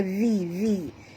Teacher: Lidah tu mesti keluar baru betul. Kalau selagi hujung lidah tak keluar, tak betul. Makhraj zal tak betul, ya. Pastikan dia keluar. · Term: huruf zal